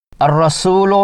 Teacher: را مشددہ زبر کی وجہ سے پر یعنی موٹی پڑھی جائے گی